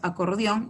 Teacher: las reconocemos porque la mayor fuerza de voz está en la última sílaba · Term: aguda